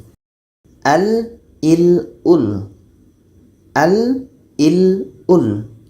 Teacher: Suara itu nanti akan keluar melalui tepi lidah kiri atau tepi lidah kanan. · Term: inhiraf